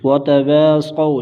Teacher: واو لین بغیر کھینچے بغیر جھٹکا دیے نرمی سے معروف پڑھیں گے